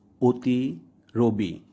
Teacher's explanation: উক্ত অ সাধারণত সংবৃত বা ও এর মতো উচ্চারিত হয়। যেমন অধ্বনির পরে হ্রস্ব ইকার যোগে অতি, রবি।